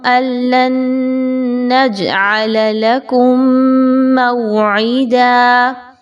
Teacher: حمزہ کو لام کے ساتھ ملائیں، پھر لام کو نون کے ساتھ ملائیں. نج میں جیم کا قلقلہ کرتے ہوئے پڑھیے